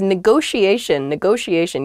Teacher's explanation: there are two t's in this but neither t is a hard t they're both very soft that sh sound because they're followed by the i and another vowel that she